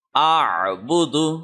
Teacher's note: یہ ذرا ٹرکی word ہے، تو حمزہ منہ کی خالی جگہ جہاں سے تقریباً قاف ادا ہو رہا ہے وہاں سے ادا ہوگا، یہ حمزہ منہ کی خالی جگہ سے، اور عین حلق کے درمیان سے ادا ہوگا جہاں پہ شاہ رگ کی ہڈی ہے